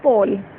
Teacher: first sound P, then O. This O is diphthong. A plus U.